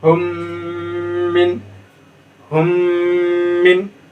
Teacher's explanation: आपका इदगाम शफ़वी होगा और उसको गुन्ना करके पढ़ेंगे।